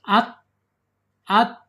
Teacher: Kemudian secara makhraj ta ini ada di allisan. Alisan yaitu ujung lidahnya menyentuh pangkal gigi dari atas.